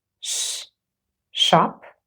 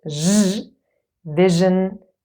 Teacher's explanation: So post-alveolar means just behind the little bump. Sh is a voiceless post-alveolar fricative, and zh is a voiced post-alveolar fricative. And here are two examples, sh, shop, and zh, vision as in television.